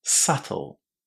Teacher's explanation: with a silent B and the stress on the first syllable